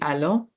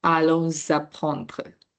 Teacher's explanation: But because the next word is followed by a vowel, now the pronunciation is allons apprendre, right? The S at the end becomes like you can hear the sound of the S because the word next to it starts with a vowel.